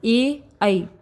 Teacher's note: कंठ तालव्य जो कंठ और तालु के संयोग से बोले जाते हैं।